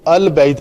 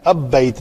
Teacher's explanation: البیت میں لام جو ہے با چونکہ قمری حروف میں سے ہے تو اس لیے اس کو البیت پڑھتے ہیں، اب بیت نہیں پڑھتے